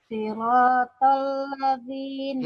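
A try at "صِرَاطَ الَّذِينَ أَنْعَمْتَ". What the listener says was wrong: Siratal ladzina an'amta. Ya, satu-satu gitu ya Bu bacanya. Maksudnya boleh pakai nada, tapi temponya harus lebih lambat dari tadi gitu ya.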